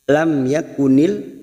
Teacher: Lam yakunil, ada mim sukun bertemu ya, namanya bacaan idhar safawi, dibaca jelas tanpa mendengung